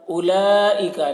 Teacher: لام میں مد ہے، اس کو زیادہ کھینچیں گے اور واو کو نہیں پڑھیں گے، واو میں کوئی حرکت نہیں ہے، اس وجہ سے واو کو نہیں پڑھا جائے گا.